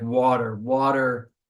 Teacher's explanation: so even though it has a t you make a D sound